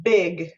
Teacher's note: the air pressure builds up behind my lips and then it's released to create that sound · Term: stop plosives